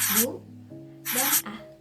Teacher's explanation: terdapat dua fonem vokal yang terletak berdampingan, yaitu u dan a, namun berada di dalam silabel yang berbeda. Maka dari itu, ini disebut deret fonem vokal.